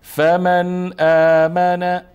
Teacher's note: فمن اظهار چون بعد از نون ساکن همزه است